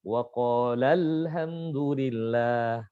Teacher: Jadi ada naik sedikit untuk berjelas bahwasanya ini adalah pelakunya 2 orang. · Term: nabar